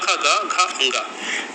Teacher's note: जिसमें जीभ का जो पिछला भाग है वो कंठ को स्पर्श करता है इसलिए इन्हें कंठ व्यंजन कहा जाता है